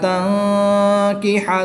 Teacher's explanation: نون ساکن کے بعد کاف حرف اخفا میں سے ہے تو یہاں پر اخفا ہوگا، یعنی غنہ زمانی کر کے پڑھیں گے